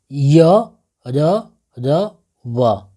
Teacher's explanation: इनका उच्चारण जीभ तारू दांत होठों के परस्पर हटाने से होता है किंतु कहीं भी पूर्ण स्पर्श नहीं होता अतः ये चारों अंतस्थ व्यंजन अर्ध स्वर कहलाते हैं अंतस्थ व्यंजन